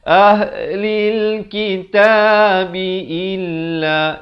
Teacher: Lam baris bawah bunyi li, bukan bunyi le ya.